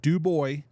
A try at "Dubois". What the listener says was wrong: You got to pronounce the S. We're stubborn folk out here. is French. It was a French senator out in Idaho that pronounced it Dubois. But you got to make sure you pronounce the S out here. You say Dubois out here, they're going to look at you like you're funny.